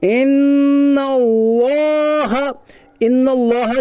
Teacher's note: نون کے اوپر تشدید ہے، تشدید والے حرف کو مشدد کہتے ہیں. نون مشدد کے پڑھنے میں ایک الف کے برابر غنہ ہوگا